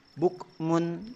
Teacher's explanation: ada yang memiliki sifat Hames tapi hanya sekedar percikan Huruf apa Huruf Kaf dan juga huruf ta ketika dia mati